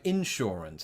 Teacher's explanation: I put the emphasis on the in instead of saying insurance